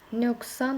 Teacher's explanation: Q samitindən sonra əgər kar samit gəlirsə, Q keçir nəyə? K-ya.